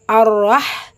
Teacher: ஹா சுக்குன் லெட்டர் ஹா வந்து ரொம்ப சாஃப்டா இருக்கும் பிளஸ் ஹம்ஸ் உடைய சட்டம் காற்றை வெளிப்படுத்தணும்